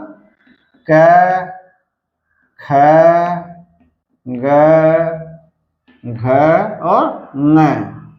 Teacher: जो जीभ का जड़ होता है जीभ का मूल भाग होता है वह क्या करता है वह कंठ को अवरुद्ध कर लेता है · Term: कंठ ध्वनि